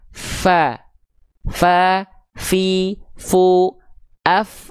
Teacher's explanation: lihat ujung gigi atas kita nempel ke bibir bawah bagian dalam yang basahnya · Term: Hams